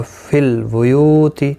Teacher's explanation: یو واو مدہ ہے، ایک الف کی مقدار کے برابر کھینچ کر پڑھیں گے